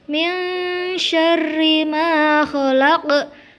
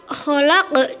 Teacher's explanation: lafaz Al-Falaq harus dipantulkan karena itu merupakan bacaan qalqalah kubra di mana ada huruf qaf di akhir kalimat